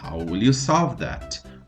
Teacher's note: Outro exemplo de silent letter é solve, porque o L não é pronunciado